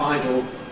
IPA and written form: ˈaɪdl̩ (idle)